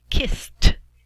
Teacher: p k f s x sh then we pronounce the e d as a t sound